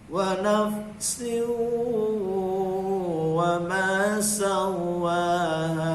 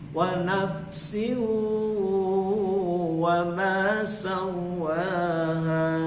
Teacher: wawunya dengungkan dulu, panjang